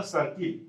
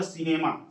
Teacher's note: तो सी के बाद आई हुआ तो उसका भी उच्चारण दंते स होगा।